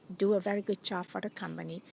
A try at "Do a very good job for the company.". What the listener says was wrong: Your vowels are very short so that it sounds like boom, boom, boom, boom. So instead of saying, do a very good job for the company, I want to say, do a very good job for the company. So I stretch out do and very, even good and job.